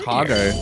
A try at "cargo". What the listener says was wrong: it's cargo with an R, not cargo. Not without the R. No, you're saying cargo without the R. It's cargo. No, you're saying cargo. Cargo without the R. There's an R in there.